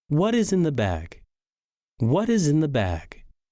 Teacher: This question ends in falling intonation, meaning that our voice should go down or be low at the end of the sentence.